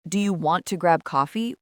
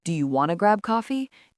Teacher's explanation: Another very common one is want to, which turns into wanna. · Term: reductions